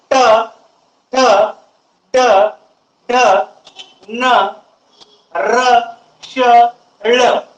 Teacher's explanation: आणि त्याचबरोबर या वर्णांचा जेव्हा तुम्ही उच्चार करू त्यावेळेस जीभ फोल्ड होते आणि उच्चार केल्या केल्या एकदम जीभ सोडल्या जाते. जसं आपण गुल्लेर मध्ये दगड ठेवून वडतो आणि एकदम सोडतो, त्या पद्धतीनं यांचा उच्चार केला जातो. · दाताच्या पाठीमागील वरचा जो खरबडीत भाग येईल त्या भागाला या ठिकाणी मूर्धा असं म्हटलेलं आहे. आणि या वर्णांचा जेव्हा तुम्ही उच्चार कराल त्यावेळेस तुमची जीभ मूर्ध्याला स्पर्श करते आणि उच्चार केल्या केल्या एकदम जीभ असे बाहेर येते. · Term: मूर्धन्य वर्ण